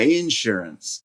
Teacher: she stressed the first syllable which is a very southern thing to do